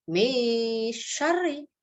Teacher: Min syarri ma khalaq. Iya, di sini ada nun sukun bertemu dengan shin ya. Dibacanya lebur ya